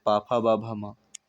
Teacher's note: पा वर्ग में होठों का स्पर्श होता है